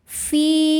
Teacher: Fi mad thabi'i dzahiri, sebab ada ya sukun sebelumnya kasrah. Cara bacanya panjang dua harakat.